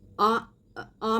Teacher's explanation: आ आ में दो गुना लगता है अ में इससे कम लगता है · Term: दीर्घ स्वर